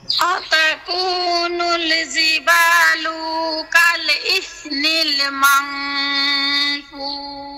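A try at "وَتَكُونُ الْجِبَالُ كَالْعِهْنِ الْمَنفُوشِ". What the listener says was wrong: এই জিবা লু লু এর মধ্যে টান দিয়ে ফেলছেন, এই টান হবে না।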